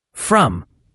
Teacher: And from has that subtle r sound, not a strong rolled r like in some languages. It's more of a soft rounded R sound.